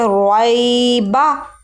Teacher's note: را کو ہم موٹا پڑھیں گے, پر پڑھیں گے. جب بھی را کے اوپر کوئی علامت ہونا تو را پر پڑھا جاتا ہے, موٹا پڑھا جاتا ہے.